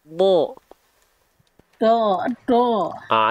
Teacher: monyongmyong W gitu ya jangan monyong Tapi diangkat pangkal lidah dan lafalkan huruf Dod makhrajnya dari pinggir lidah ya disentuhkan ke gigi geraham atas kita boleh yang kiri boleh yang kanan dan angkat pangkal lidah Do